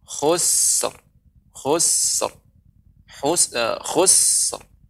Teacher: Khus ya, berikan dulu sinnya Ibu, karena sin ini huruf hamas. Ketika dia sukun tetap mengalir udaranya.